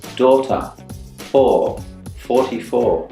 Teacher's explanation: OR is a vowel sound with rounded lips, like a circle, but only a very small one. Your tongue goes very far back down in your mouth, almost closing your throat. It's OR, like you're getting ready to kiss, but not ah. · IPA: ɔ